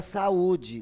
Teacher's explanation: É o encontro de 2 vogais, mas que elas se separam, olha lá. O A é separado do U de saúde. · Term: hiato